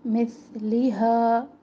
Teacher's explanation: सा को सीन से ना बदले, मिथलिहा। हा अलिफ मद्दा है तो हा अलिफ मद्दा को हम अलिफ मद्दा ही छोड़ेंगे वक़्फ़ की सूरत में, इस मिक़दार को कम नहीं करेंगे, एक अलिफ के बराबर छोड़ें इसको।